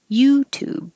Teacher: these are both ooh so that's easy vowel but put the stress on you youtube so that you will be a little longer